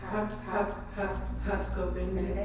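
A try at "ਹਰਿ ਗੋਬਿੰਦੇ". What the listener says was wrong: So it's H-A-R. The R is hard, like a D, but not quite a D.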